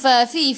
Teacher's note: gigi atas menyentuh perut bibir bawah dan sifat hurufnya hamas kena ada angin